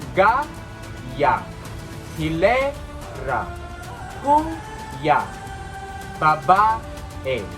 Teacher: Sa English ito ay tinatawag na second to the last. Ang diin ay nasa patinig ng pinultima at ang sagisag ng diin ay pahilis. · Itong mga salita ito ay binibigkas ng dahan-dahan. Hindi siya mabilis at wala siyang impit. Kaya ito'y tinatawag na malumay.